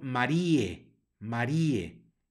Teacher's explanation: la palabra María que termina con un diptongo allí ae que suena como e